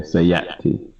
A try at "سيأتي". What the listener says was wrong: Not with an ayn, no. Just No, just like like I said, like if someone were to hit you in your throat while you were saying something, sayati. Like just cut your breath off.